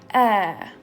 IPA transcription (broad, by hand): æː